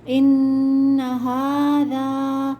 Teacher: نون پہ تشدید ہے، سختی کے ساتھ پڑھیں گے، غنہ کریں گے لیکن کھینچیں گے نہیں